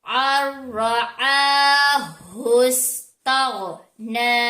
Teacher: را کے اوپر زبر آ جانے کی وجہ سے را موٹا ہوگا، موٹا پڑ جائے گا۔